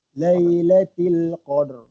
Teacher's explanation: Ra tu ra takrir. Sifat huruf ra takrir, dia bergetar macam bergetar ulang-ulang ni.